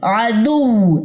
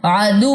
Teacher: आवाज ऊपर की तरफ रेज होगी, ऊपर की तरफ उठेगी